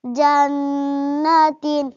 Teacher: ایک الف کے برابر غنہ ہو کر پڑھا جاتا ہے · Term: حرف غنہ